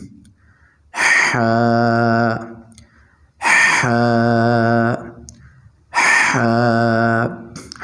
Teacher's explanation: حلق کے درمیان سے لفظ حا ادا ہوتا ہے